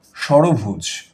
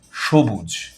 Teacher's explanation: এখানে কিন্তু সবগুলো স এর উচ্চারণ একই রকম।